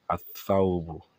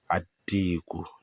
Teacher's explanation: This lam will not be pronounced. It's going to be embedded in the Harfu Shamsiya because the makhraj, ibiti ati ń pè wọ́n, they are very close.